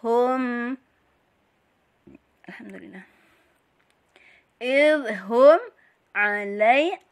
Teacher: mim mati bertemu ain jadi idhar safawi, dibaca jelas. Hum, alhamdulillah.